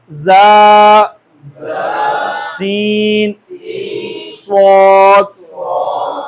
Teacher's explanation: सख्ती है और सीटी वाली सिफ्त इसमें पाई जाती है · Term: हरूफ सफ़ीरी